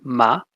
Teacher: manner of articulation so first we have the nasals and that's bilabial so your two lips together